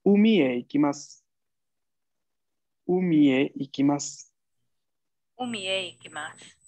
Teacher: una frase afirmativa en japonés tiene una entonación bastante neutral